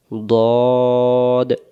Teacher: দদ অক্ষর মারির দাঁতের গোড়া থেকে মোটা করে পড়তে হয়